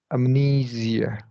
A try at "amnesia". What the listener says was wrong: Okay, so Asia sounded great. I heard a Zia here. Amnesia.